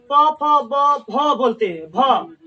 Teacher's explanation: भ बोलने से क्या आता है, ओष्ठ, दोनों ओष्ठ आपस में सट जा रहा है